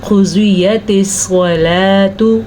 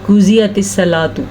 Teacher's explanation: اگر ہم اس کو قاف ضاد اور صاد کو پر نہیں کریں گے یعنی کہ باریک پڑھیں گے تو ہم غلط پڑھیں گے